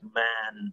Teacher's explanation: nasalization so if i say the word like man for example there may be some nasal quality on the vowels